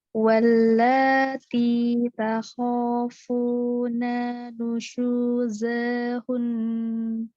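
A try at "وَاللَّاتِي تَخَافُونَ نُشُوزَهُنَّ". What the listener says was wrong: Zanya benar, tapi takhafuna nanya 2 harokat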